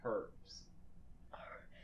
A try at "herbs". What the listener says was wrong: did you just pronounce the H?